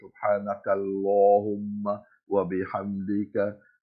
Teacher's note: We pronounce it full mouth and round mouth. That's because the Laam in Lafdhul Jalaalah comes after Fatha or a Dhamma.